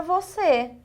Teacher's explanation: Você é a sílaba mais forte, porém ela tem o som fechado. Por ela ter o som fechado, ele vai receber o acento circunflexo e não o acento agudo como na palavra café.